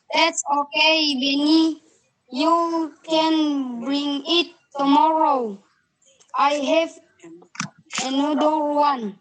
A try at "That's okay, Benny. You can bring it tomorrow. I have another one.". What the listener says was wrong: Nanti bahas pengucapannya tinggal diperhalus, didengarkan. Jadi bring it itu disambung saja, bring it.